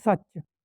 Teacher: ਚ ਦੀ ਆਪਾਂ ਆਵਾਜ਼ ਡਬਲ ਕਰਨੀ ਹੈ ਅਤੇ ਸ ਦੇ ਉੱਤੇ ਸੱਸੇ ਦੇ ਉੱਤੇ ਜਿਹੜਾ ਆਪਾਂ ਉਹ ਅੱਧਕ ਜਿਹੜਾ ਇੱਥੇ ਲਗਾ ਦਿੱਤਾ ਹੈ।